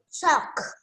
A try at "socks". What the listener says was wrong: Socks. There's S. You say socks.